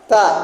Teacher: bunyi gigi depan gesekan tidak bersuara tipis